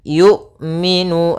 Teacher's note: ketika melafalkan hamzah itu tidak ada nafas yang dialirkan dan tidak ada pula suara yang dialirkan, tapi dia suaranya tertahan dan nafasnya tertahan